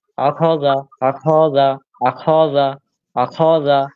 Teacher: আপনি খতে টান মারছেন ভাই খতে টান হয়ে যাচ্ছে